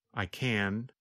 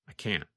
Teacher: When we say the positive form, we pronounce the letter N longer. The N sound, N, N, N, lasts longer than in the negative form.